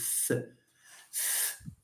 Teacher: th is a voiceless interdental fricative